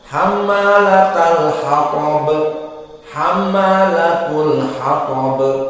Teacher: Hammalatal dibaca ta jika disambungkan dengan al-hatab. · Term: ta marbutah